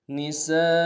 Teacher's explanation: ترثوا النساء، نساء میں نون کو نون سے ادا کریں گے، سین کی سیٹی باریک ہوگی ، سین کے سالف مدہ، الف مدہ